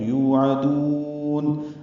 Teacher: یو واو مدہ ہے، عین وسط حلق سے ادا کریں گے، دال پر پیش اور اس کے بعد واو ساکن آنے کی وجہ سے یہ بھی واو مدہ ہے، تو یوعدون۔